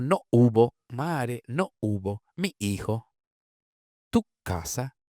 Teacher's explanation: son formas con cortes glóticos, articulaciones glotales